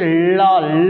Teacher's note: तो जीवा जाकर के तालू में ऊपर सड़ती है आपके और वायु जो है जीवा के दोनों तरफ से निकल जाती है इसी कारण से इसको पार्श्विक वण कहते हैं तो प्रयत्न के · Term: पार्श्विक वर्ण